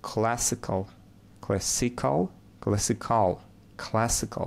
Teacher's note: So the first syllable is stressed.